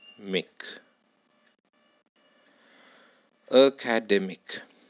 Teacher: Now you have to decide which syllable is more prominent than the remaining syllables. Here, the third syllable is more prominent than the first, second and fourth syllables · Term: primary stress